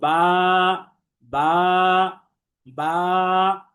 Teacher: বা হরফটি আমরা দেখেছিলাম যে বারিক বা পাতলা তথা এটা মুখ স্বাভাবিক রেখে পড়তে হয়